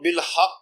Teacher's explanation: بالحق میں قاف پر بھی واضح قلقلہ کریں گے کیونکہ قاف مشدد ہے۔